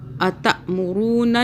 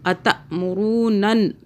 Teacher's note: یہ گنہ ناک میں رکھنا ہے 2 سیکنڈ کے لیے، اور ہر تشدید والے حرف کی آواز 2 مرتبہ بنتی ہے، ایک پچھلے حرف سے اور اس کے بعد اس نون کا بتاتے ہیں کیسے ہوتا ہے.